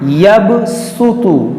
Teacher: तो को मोटा करेंगे और सीन को बारीक करेंगे